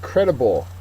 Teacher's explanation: is dependence the antonym is freedom our next word credible uh credible is an adjective first syllable is accented